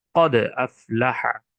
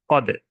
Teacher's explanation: এখানে দাল হরফটি কলকলার হরফ, অর্থাৎ দাল হরফের মধ্যে জজম হওয়ার কারণে কলকলা করে আমাদের প্রতিধ্বনি করতে হচ্ছে, বা কলকলা করে উচ্চারিত করতে হচ্ছে, বা প্রতিধ্বনি হয়ে উচ্চারিত হচ্ছে, যেমন কদ।